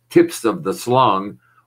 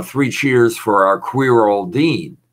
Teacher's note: or slips of the tongue meaning what i've done there is reversed initial consonants and consonant blends